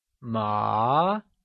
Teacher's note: Ma, meaning hemp, carries the second or the mid-rising tone